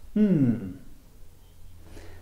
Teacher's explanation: It's a Voiced sound, so the vocal chords are used to make the sound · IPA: /m/